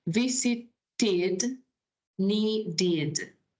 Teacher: this ed d has a sound like a complete syllable · this ed has a sound like a complete syllable, like id, okay? This happens if the verb ends in t, like visit, or d, like need.